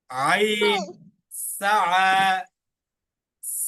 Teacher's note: আইনটা উচ্চারণ হবে কোন জায়গা থেকে? হলকের মাঝখান থেকে